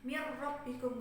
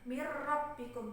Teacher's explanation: ada huruf nun sukun bertemu dengan huruf ro makanya dibaca idgham idghamnya dimasukkan secara sempurna karena ghunnah maupun makhraj dari sifat huruf nun nya itu sudah melebur sempurna ke huruf Ro